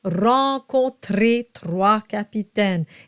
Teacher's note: Now I've been doing my R's in the throat. That is how I'm comfortable rolling my R's.